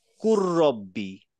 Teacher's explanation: এই লাম এবং র একই জায়গা থেকে উচ্চারণ হয় কাছাকাছি